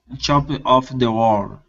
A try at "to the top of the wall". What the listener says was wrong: To the top, and on that P instead of tope, to the top of the wall.